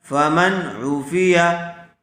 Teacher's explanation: نون ساکن کے بعد حروف حلقی میں سے عین آیا ہوا ہے، اس لیے بغیر غننے کے جلد اظہار کر کے پڑھیں گے۔ فمن عوفیہ، زبر زیر پیش کو جلدی پڑھیں گے، کھینچیں گے نہیں۔